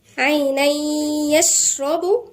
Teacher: الشين هنا من حروف الهمس جري النفس